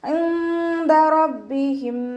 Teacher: നൂൻ സാക്കിനെ മറച്ചു വെച്ച് മണിച്ചോതി കൊടുക്കുക കേട്ടോ. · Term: ഇഖ്ഫാ